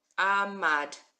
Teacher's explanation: We've got our silent letter ayin, only taking on the sound of the vowel.